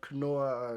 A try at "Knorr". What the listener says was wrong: The K is not silent here.